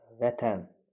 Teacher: Vurğu sondadır. Xitab kimi işlənəndə artıq əvvələ keçəcək vurğu.